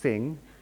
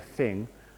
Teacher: Japanese speakers will generally pronounce the English th sound as an S